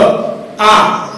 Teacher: इस प्रकार के उच्चारण में मुंह पूरा खुला रहता है और वायु जो है वो बाहर आती है, बीच में कहीं कोई रुकावट नहीं है। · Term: स्वर